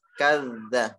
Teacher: Hanya saja tasydid ada di zal. Jadi ditekan ya dari ka ke za.